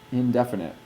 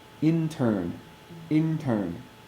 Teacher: Indefinite is definitely in the teeth. Intern is a little bit behind the teeth.